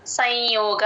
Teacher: య ముందు ఎప్పుడు సున్నా వచ్చినా సరే దాన్ని హాఫే చెప్తాం. సో నాజల్ సౌండ్ వస్తుందన్నమాట